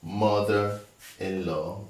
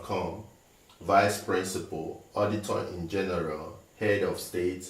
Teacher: so the stress is put on the first syllable